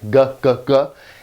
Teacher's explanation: made in the back of the throat with the back of the tongue